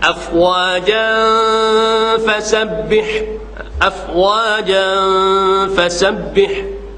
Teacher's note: Kita dapat rasakan keluarnya bunyi dengung di khayshum.